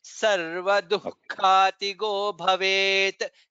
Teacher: So after Du, Visarga should be heard. Then Kha Mahaprana.